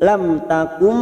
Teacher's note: mim sukun bertemu ta Idhar Safawi dibaca jelas tanpa mendengung